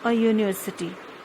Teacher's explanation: begins with a vowel U, but it has Y sound, as though spelt as university.